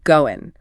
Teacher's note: That final G sound just vanishes.